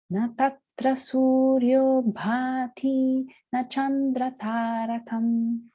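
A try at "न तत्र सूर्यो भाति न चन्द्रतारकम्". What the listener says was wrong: Yes. Perfect.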